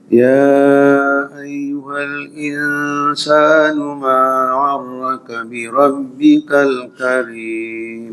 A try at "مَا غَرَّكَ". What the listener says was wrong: Izin Pak Haji, gharin ya, gharrak aja.